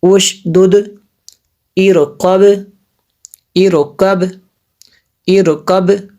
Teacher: ایسے باقی آخر پہ آواز آئے گی، یہ قلقلہ ہے جی۔ ارقب، یہ را پوٹ پڑھی جائے گی کیونکہ یہ پیچھے جو ہے اس کی حمزہ وصلی ہے۔